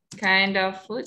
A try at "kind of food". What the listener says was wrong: D-nya dibaca dulu, Miss. Kind of. Kind of. Kind. I-nya itu dibaca I.